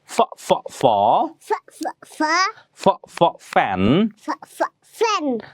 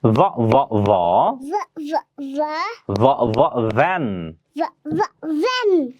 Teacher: the voiceless sound fa that you hear at the beginning of the word fan and its voiced partner va that you hear at the beginning of the word van. Listen carefully to hear the difference. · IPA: /f/ & /v/